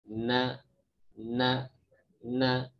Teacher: nun mengeluarkan dari makhrajnya ujung gigi ujung lidah ini ketemu dengan langit-langit gusi belakang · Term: nun murni